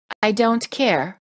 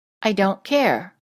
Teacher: The held T is created with the tongue touching the gum ridge and not coming back down. You hold the tongue up and no air comes out of your mouth.